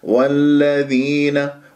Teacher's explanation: هذه اللام المشدده لا تمسكها لا تطل جريان الصوت فيها